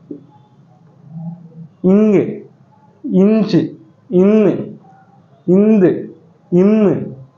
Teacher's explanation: மெல்லினத்துடைய பிறப்பிடம் எங்கன்னு சொல்லி பார்த்தீங்கன்னா மூக்கு ங்கு இஞ்சு ன்னு ங்கு ன்னு இதை நீங்க ஒழிக்கிறபோது உங்களுக்கு அந்த ஓசை